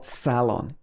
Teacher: you can stress the first part of the word if you're in british english